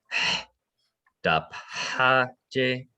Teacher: this is that like really breathy H